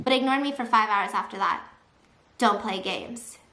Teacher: now suddenly gasping for air, all breathy and broken